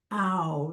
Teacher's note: And ow is a diphthong. It's ah and oo together. And we do it with the ah.